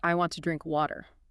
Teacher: You hit want hard, your vocal tract instantly relaxes into the schwa for t, and then you tense back up for drink.